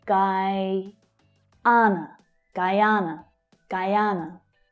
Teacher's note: The stress here is on the second syllable, but the first syllable also includes a stronger vowel sound.